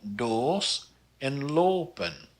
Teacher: The long O sounds like O and rounded even more so than the short O, and it also follows the same pattern as the long A and the long E, like in doos and lopen.